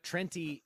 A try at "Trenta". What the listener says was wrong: Trenta. It ends with an A. No one says Trenti. I've never heard anyone say Trenti. Like it rhymes 20.